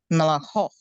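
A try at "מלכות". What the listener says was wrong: Yeah. Yes.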